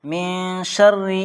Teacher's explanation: نون ساکن کے بعد اخفا لیٹرز میں سے شین آیا ہے اس لیے یہاں پر اخفا ہوگا، یعنی ناک میں آواز چھپا کر پڑھنی ہے. اور یہاں پر کسرہ آیا ہے اس لیے را پر کسرہ ہو تو را کو باریک پڑھنا ہے، پتلا کر کے پڑھنا ہے.